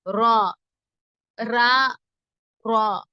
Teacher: தமிழ்ல சொல்ற மாதிரி ரா அப்படி சொல்லாம கொஞ்சம் அசைச்சலா சொல்லணும்